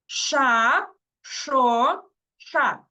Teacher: якщо трошечки може не виходити спробуйте язичок попіднебінню поставити трошечки далі І так само як кажете букву с так само кажемо ш язичок приймає положення трішечки далі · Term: звук ш